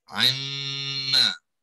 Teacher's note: Ya, sebab dia dah dimasukkan dalam mim, jadi nun dia dihazafkan ya. Kita tak menyebut nun di sini, yang kita sebut ialah mim sahaja. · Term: Dengung khusyum